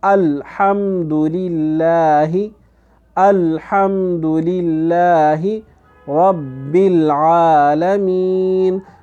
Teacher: تو اس میں سے یہ کیا ہے کہ لام بھی ہے کہ لام میں صفت قلقلہ یہ اس میں نہیں ہے، تو اس میں ہم الم نہیں پڑھیں گے بلکہ ال زبان کو اوپر تالو کے ساتھ چمٹے رہنے دیں گے